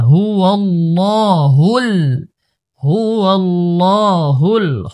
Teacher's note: প্রথম লাম মোটা, তারপরের লাম পাতলা